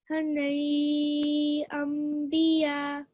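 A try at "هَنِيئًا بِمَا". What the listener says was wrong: Not biya. So just read the 2 words separately.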